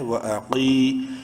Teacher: قاف کو بولڈ، ساتھ ہی ایک الف کے برابر لمبا یا مدہ ہے